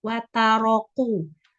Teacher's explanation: Jadi kafnya terlalu ke belakang. Terucapnya seperti qaf.